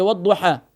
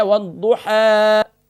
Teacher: کھڑی زبر ہمیں یہ بتا رہی ہے کہ یہاں ہم نے جب اسٹاپ کرنا ہے تو یہاں ہم نے 1 الف کی مقدار اس کو کھینچنا ہے. تو والضحیٰ یہاں اس طریقے سے نہیں پڑھنا، اس کو شارٹ نہیں کرنا کہ والضحیٰ، بلکہ اس کو کھینچنا ہے والضحیٰ 1 الف کی مقدار.